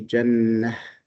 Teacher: But if you stop, you say jannah. So we are dropping not only the haraka, the tanween, but even the ta. And we are replacing it with the ha in the pronunciation. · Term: ta marbuta